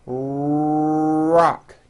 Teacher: notice how my lips are coming forward and my tongue moves back in my mouth, and I push out the R sound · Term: American R sound